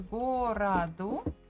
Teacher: the second one o is unstressed that's why we pronounce it as a gorado but if you pronounce both as o is also fine